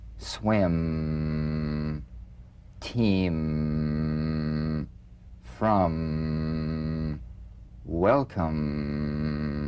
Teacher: the M is a nasal labial consonant made with the lips · simply allow your lips to meet very gently and hum the lips should be very relaxed almost puffy feeling not pressed